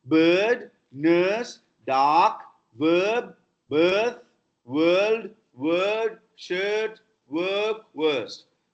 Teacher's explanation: R is dropped when it is not followed by a vowel sound. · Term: R dropping